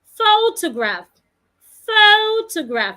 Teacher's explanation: In that word, I'm stressing the first syllable. Photograph has three syllables.